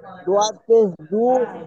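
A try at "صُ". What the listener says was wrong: কোথায় দোয়াত আছে? ওটা তো সোয়াদ। সোয়াদ।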